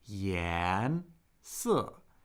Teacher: So 颜, the tone rises, then 色, the tone falls. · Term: rising second tone